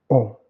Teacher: Le O, il est plus bas. Donc, le dos de la langue se rapproche moins du voile du palais que par rapport à OU. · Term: fermée